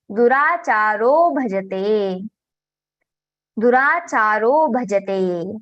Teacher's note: after the visarga there is soft letter, mridu varna, mridu vyanjana, then also visarga gets converted into O.